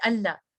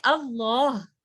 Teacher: ہم نے لام کو ہیوی کرنا ہے